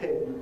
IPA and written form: pɪn (pin)